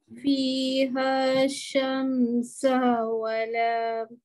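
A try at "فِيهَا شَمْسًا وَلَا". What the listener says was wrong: Lama sikit. Syamsau wala.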